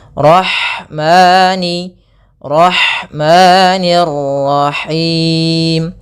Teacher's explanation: Kemudian ada lafal ha, alirkan nafasnya pada lafal ha karena di sini ada hukum tajwid berupa ada sifat huruf ha yang itu sifat hamas, mengalirnya nafas · Apabila ada fathah bertemu dengan alif maka kita namakan dengan bacaan mad thabi'i. Panjangnya dua harakat untuk lafal mani.